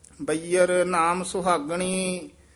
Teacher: ਸੁਹਾਗਣੀ ਦੇ ਹੂੜਾ ਵੀ ਹੈ ਔਂਕੜ ਵੀ ਹੈ ਦਰਮਿਆਨਾ ਜਿਹਾ ਉਚਾਰਨ ਕਰਨਾ